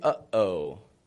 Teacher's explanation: That uses your glottis to stop the voice and to start it again.